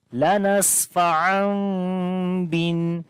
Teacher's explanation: So we hide the sound of meem here and we do not say the noon sound instead of meem. · We make iqlab here as we change the noon sound, which is the noon of tanween, into a meem. So then after the meem sakin, the remaining there is ba, which is also ikhfa shafawi.